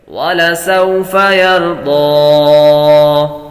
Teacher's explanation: وحروف لین میں سے لمبا نہیں کریں گے